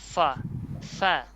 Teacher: উপরের দাঁত নিচের ঠোঁট বাতাসটা চালু থাকে